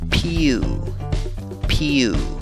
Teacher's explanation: empieza con la pronunciación de la P seguida de la Y y una U larga. Esta segunda sílaba se pronuncia pew, pew.